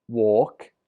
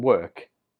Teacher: the difference is in the vowel or and ER